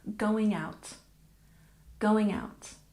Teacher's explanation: going out, we stress the first syllable. Going out.